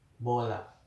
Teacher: vokal O adalah bunyi vokal belakang tengah tak bundar.